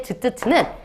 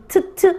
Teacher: 지금은 구개음이지만 경구개음이지만 중세국어 때 즈츠츠는 치음이었어요. 다시 말해 여기서 나는 소리였어.